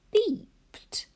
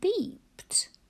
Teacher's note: in beeped, the ed suffix sounds like t. We still write ed.